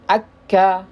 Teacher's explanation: Jadi dia lebih depan. Nah, ketika kita ucapkan huruf qaf itu lebih dalam. Nah, kaf itu lebih keluar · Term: huruf kaf